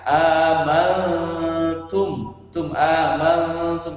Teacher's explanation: Dia harus terdengar samar ketika pelafazan huruf nunnya